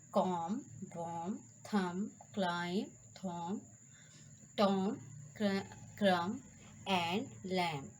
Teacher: there is no sound of b in these words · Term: silent letter b